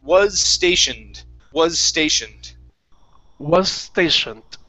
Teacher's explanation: with the S on the end of was, okay, you want to combine it with the next word. So instead of saying stationed, this is going to be was stationed, was stationed.